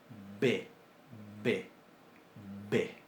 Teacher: Lo que en lingüística se llama bilabial plosiva sonora.